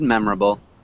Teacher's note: that o r sound isn't really there